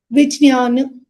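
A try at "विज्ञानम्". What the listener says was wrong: Don't say the ja very audibly. Like it should not be, the Vijnanam. Don't highlight the ja. Don't make it like which. Vijnanam. Don't add too much air or anything to that letter. It's just Vijnanam. Vijnanam, like in the English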